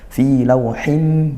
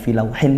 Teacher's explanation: tanwin bertemu mim dibaca masuk dan dengung ya, seolah tidak ada bunyi nun pada tanwinnya karena dia langsung idgham, langsung masuk ke mim dan tadi disertai dengung.